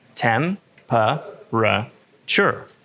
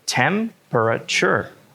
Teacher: If you look at the spelling, you may think that temperature is pronounced with 4 syllables. Tem-per-a-ture. But actually, it's only 3.